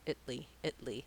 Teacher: i don't want to be stressed just light and short italy italy so practicing those last two syllables italy italy slowly